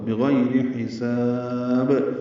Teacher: را باریک ہے، حساب ہا وسط حلق سے ادا کریں گے، سین کو صفیر کی آواز سے ادا کرتے ہوئے لمبا کریں گے اور با ساکن پہ قلقلہ ہوگا